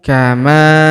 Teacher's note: huruf ma kita panjangkan dua harakat karena alif di depannya